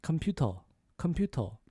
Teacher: So we lose that R sound and it's computer